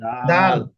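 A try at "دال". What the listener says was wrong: হ্যা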